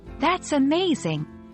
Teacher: Circumflex or rise-fall intonation, shows strong feelings or emphasis